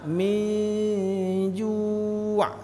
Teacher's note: nun mati berjumpa dengan jim, ikhfa, juga lama.